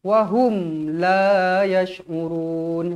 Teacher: mim mati mim sukun bertemu huruf lam dekat sini hukumnya tuan-tuan dan puan-puan Izhar Syafawi jelas